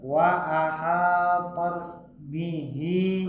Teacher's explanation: Hi-nya panjang dulu. Ya, hi-nya panjang dulu.